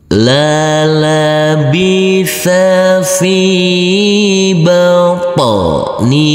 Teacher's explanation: Huruf H kita baca panjang dengan panjang 2 harokat karena di bawahnya ada huruf alif kecil yang berdiri tegak lurus. · huruf fa yang berkasroh ini bertemu dengan huruf ya sukun, maka huruf fa kita baca dengan panjang 2 harokat